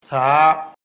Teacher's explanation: জিহ্বার আগা উপরের দাঁতের আগায় লাগবে, জিহ্বা এবং দাঁতের ফাঁকে বাতাস বের হবে, এক আলিফ পরিমাণ লম্বা হবে, পাতলা আওয়াজ হবে।